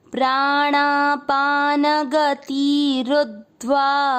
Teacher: तीसरे चरण में रू की मात्रा छोटी है तो इसको लंबा नहीं खींचना है